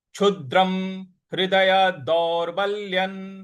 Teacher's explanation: जो अनुस्वार है उसका उच्चारण हमें न ले आना है